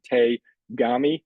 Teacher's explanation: why does te for hand and kami for paper become te gami with that voiced G sound? That's something called rendaku.